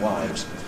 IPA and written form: waɪvz (wives)